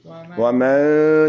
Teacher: So you have to hide the noon. وَمَن. You give it that little nasal sound